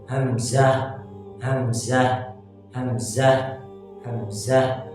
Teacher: हमजा और हा अदा होते हैं अक़सा हलक से यानी गले के उस हिस्से से जो सीने की जानिब है